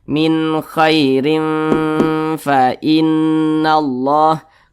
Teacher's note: Kemudian didengungkan. Jadi suaranya itu kita tahan, kita panjangkan sejenak. Panjang daripada dengungnya atau tempo daripada dengung itu kira-kira 2 ketukan atau 2 harokat. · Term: ikhfa hakiki ausat